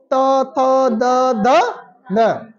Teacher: आपका जीभ आपके दांतों को टच कर रहा है